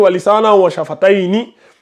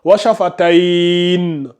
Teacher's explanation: Si on fait une pause ici, là, quand on fait la pause, au lieu de dire Walisana wa shafatayni, on ne va pas lire Walisana wa shafatayni. On supprime le ni, la kasra, on le remplace par un soukoun. Donc ça donne Walisana wa shafatayn.